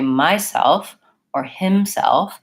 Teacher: I will hear people stressing the first syllable of these words